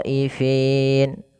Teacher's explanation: bacaan mad wajib muttasil, maka khonya wajib dipanjangkan 4 harokat atau 5 harokat.